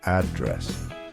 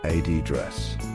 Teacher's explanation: the word address is stressed on the second syllable in British English address while in American English it's stressed on the first syllable